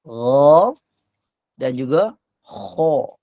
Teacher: huruf yang berada di bahagian atas sekali, gha dan juga kha